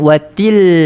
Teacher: pada huruf lam mati, tak boleh ada lantunan ibu ayah